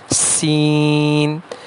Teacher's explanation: سین اور زا کا ایک ہی مخرج ہے، یعنی دانت مل جائیں اور زبان جو ہے وہ نیچے والے دانتوں کے کنارے کو لگتی ہو، لیکن کچھ اس کا اتصال اوپر کے دو دانتوں کے ساتھ بھی ہو، جیسے دانت مل گئے ہیں اور زبان جو ہے وہ نیچے والے دانتوں کے کنارے کے ساتھ ہے، لیکن کچھ اس کا اتصال اوپر والے دانتوں کے ساتھ بھی ہے، تو اس سے زا اور سین کی ادائیگی ہوتی ہے۔ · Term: سیٹی والا حرف